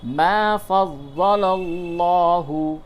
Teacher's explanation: لام کو پڑھ کر کے پڑھیں گے یہاں پہ موٹا، یعنی کہ منہ بھر کے آواز نکلے گی